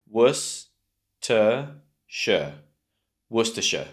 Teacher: in the middle, the second syllable, we have that schwa sound